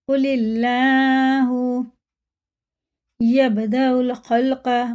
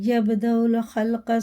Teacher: با میں قلقلہ ہے سخت پڑھیں گے